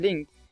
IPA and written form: leŋθ (length)